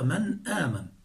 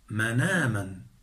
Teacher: فتحنا النون الساكنة أي حركناها بحركة الهمز وهي الفتحة بعد حذف الهمز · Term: النقل